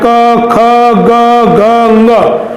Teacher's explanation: इस अकुह विसर्जनीयानाम कंठः, इसका अर्थ है अ, आ, क वर्ग, अ, विसर्ग, इन सभी ध्वनियों का उच्चारण स्थान कंठ होता है